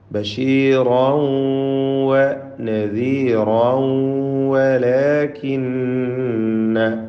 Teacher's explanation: ബശീറൻ വനദീറൻ വലാകിന്ന, ആ തൻവീനിൽ അല്ലെങ്കിൽ റായിൽ വരുന്ന തഫ്ഖീം അത് ശേഷമുള്ള വാവിലും വരരുത് എന്നത് ശ്രദ്ധിക്കണം. റായിൽ മാത്രം ഒതുക്കുക.